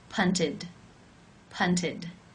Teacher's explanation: This means it is case 3, where the ED is pronounced as the I as in sit with the D sound